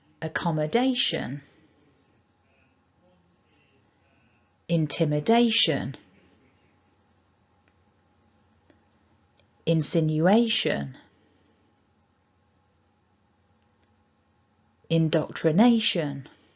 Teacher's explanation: these words have two stresses uh or a main and then a secondary stress and you see there the secondary is on syllable two and our main stress is on syllable four · the secondary is on syllable 2 and our main stress is on syllable 4